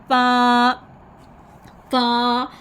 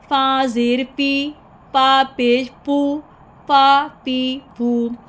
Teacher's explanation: फ़ा में हमने जो अपने ऊपर दांतों के किनारे हैं वो निचले होंठ पर रखेंगे और निचले होंठ के साथ लगाएंगे गीले हिस्से के साथ, तो फ़ा अदा करेंगे।